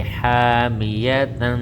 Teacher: تنوین کے بعد حروف اخفا میں سے تا آئی ہوئی ہے، یہاں پر اخفا کا قاعدہ لگے گا، ہم آواز کو ناک میں چھپا کر پڑھیں گے اور ایک الف کے برابر لمبا کریں گے۔